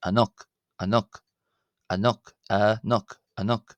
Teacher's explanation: In such an instance, its purpose is to show that the vowel is pronounced by itself as a separate syllable